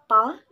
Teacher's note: voiceless bilabial stop sound pa